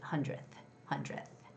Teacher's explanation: And when you're saying 100th, it's just 100th. Uh and when you're saying the word 100th, you don't necessarily have to make the d sound at the end. It's just 100th.